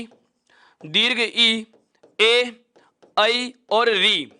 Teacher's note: वे स्वर जिन्हें बोलते समय जीभ का आगे वाला भाग क्रियाशील हो, अग्र भाग क्रियाशील हो, वह कहलाता है अग्र स्वर।